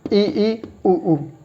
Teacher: समृद्ध स्वरों में जिह्वा सर्वाधिक ऊपर उठेगी, सर्वाधिक ऊपर उठती है। ठीक है, मुंह उच्चारण करते वक्त दोनों होठ पास में आते हैं, मुंह बंद होता है